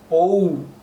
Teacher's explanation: O is a complicated sound. In English, it has O plus U and strongly pronounced.